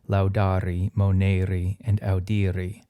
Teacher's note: Instead of ending with a short e, we're going to end with a long I. For first, second, and fourth conjugation verbs, this long I is placed after the r, so we have laudari, moneri, and audiri.